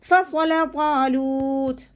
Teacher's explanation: സ്വാദ് ഇസ്തിഅലാഇൻ്റെയും ഇത്ബാക്കിൻ്റെയും ലെറ്ററാണ്. നാവിൻ്റെ മുഴുവൻ ഭാഗങ്ങളും മുകളിലേക്ക് ഉയർത്തിയിട്ട് തർഫീം ചെയ്ത് കൊടുക്കുക